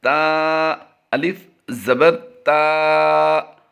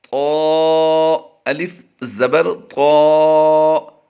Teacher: تا حروف مستفلہ ہے اور طا حروف مستعلیہ ہے، یعنی اسے پر کر کے پڑھا جائے گا